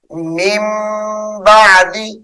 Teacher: فی اللہ من بعد، یہاں پر اقلاب ہو رہا ہے، یعنی نون ساکن کے بعد حرف با آ رہا ہے، تو نون کو میم سے بدل کر پڑھیں گے